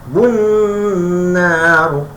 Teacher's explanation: alif lam syamsiah ni mesti kena tekankan, kena tasydid syiddah ataupun sabdu Jawanya, dengungkan dua.